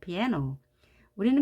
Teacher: 그러면 여기서는 A가 제일 힘이 세서 piano 이렇게 발음을 합니다.